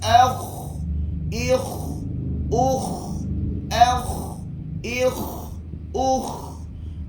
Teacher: huruf kha ada dia panggil suara terlepas, dia panggil hamas, yakni suara terlepas